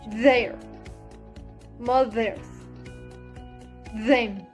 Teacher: to make a pressure between the tongue tip and upper teeth the place of articulation is dental